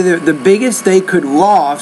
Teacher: Obviously, the biggest they could loft, so when you have the could and the and loft is the main verb, could is the auxiliary verb, put more stress on the main verb